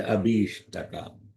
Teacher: when it is chanted, they omit that Mahaprana and say Abhishtaka